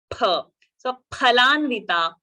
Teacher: the lip should touch and then you press and push out more air to get the P sound, not P, P, P. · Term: Aspiration